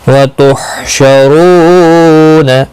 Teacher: رو واو مدہ ہے، ایک الف کی مقدار کے برابر کھینچ کر پڑھیں گے